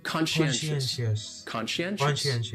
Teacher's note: That second syllable is what really confuses people, because that SCI almost sounds like you're saying she.